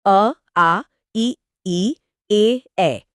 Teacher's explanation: इसमें होंठ गोल नहीं होते बल्कि सामान्य या फैले हुए रहते हैं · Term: अवृत्त मुखी, अवृत्तमुखी